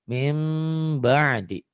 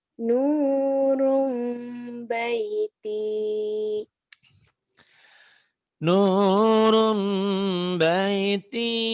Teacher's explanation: bunyi M tapi bindeng ember. Min jadi N-nya berubah jadi M ya. Mim gitu. Mim ba'di. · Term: iklab